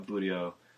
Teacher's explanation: I put the emphasis on the middle syllable for that one.